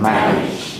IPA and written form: ˈmænɪʤ (manage)